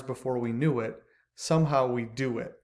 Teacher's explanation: because the stress is on new and do and not on it at the end · because the stress is on knew and do and not on it at the end, that's called a feminine rhyme because it's actually 2 syllables at the end that rhymes, and the last syllable is not emphasized.